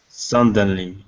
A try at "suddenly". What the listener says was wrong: So what you're doing, you're placing an N right here. Okay, after the U, you're saying sudden instead of sun. Okay, take out that N. Suddenly. Because right now you are pronouncing it like this with an N here, and you need to remove that N. Okay, so instead of sudden, it's sudden.